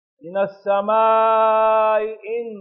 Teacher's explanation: تو کیونکہ یہاں من السماء ان حمزہ مکسور ہے دوسرا، تو یہاں پر تسہیل کل یا، من السماء ان، من السماء، ان پہلا حمزہ تحقیق سے، اس لیے اس میں مد بھی کریں گے، اور دوسرا جو ہے تسہیل سے